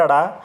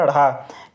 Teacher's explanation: जब इनका उच्चारण करते हैं तो जीभ तालु को झटके के साथ स्पर्श करती है और अलग हो जाती है। तो इसलिए इन्हें कहा गया उत्क्षिप्त व्यंजन।